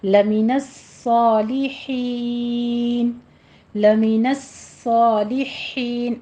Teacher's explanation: صاد پر پڑھا جائے گی، اس کے اوپر سیٹی کی آواز بھی ہے اور سختی بھی کرنی ہے، تشدید ہے۔ لمن الصالحین، لمن الصالحین، ہا باریک پڑی جائے گی، آخر پہ مد عارض وقفی کریں گے جس کو آپ نے 6 کاؤنٹ کرنا ہے۔